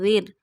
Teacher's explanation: Read Ra in a thin voice because before Ra sakina there is a kasra. Dal Ra zer zir.